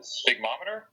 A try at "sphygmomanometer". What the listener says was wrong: Sphygmomanometer. You're missing a couple syllables there. Sphygmomanometer.